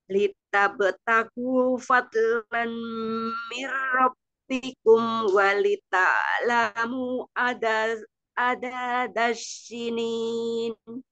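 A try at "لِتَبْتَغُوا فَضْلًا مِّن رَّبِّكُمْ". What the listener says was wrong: Wow, di huruf bot ya, masih kurang tebalnya ya, Om. Kurang. Tipis. Mir.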